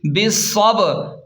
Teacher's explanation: صاد کو موٹا پڑھیں اور با ساکن ہے تو اس لیے یہاں قلقلہ ہوگا، یعنی جھٹکا دے کر پڑھیں گے